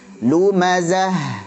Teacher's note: marbutah ketika waqaf jadi ha, maka dialirkan rokhawah.